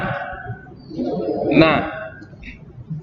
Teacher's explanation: Makhorijul dari huruf na terletak pada ujung lidah bertemu bawah sedikit makhraj la dari arah gusi gigi atas.